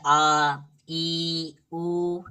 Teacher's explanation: जिनके उच्चारण में ह्रस्व स्वर से अधिक समय, मतलब 2 मात्रा का समय लगता है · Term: दीर्घ स्वर